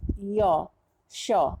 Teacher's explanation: च वर्ग, य और तालव्य श, इनका उच्चारण तालु से होता है। य, श, जीभ हमारी तालु को जाके छूती है, इसलिए ये तालव्य वर्ण है।